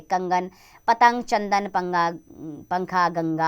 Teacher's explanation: अनुस्वार का उच्चारण स्वर के उपरांत किया जाता है तथा इसका उच्चारण करते समय हवा नाक से बाहर निकलती है।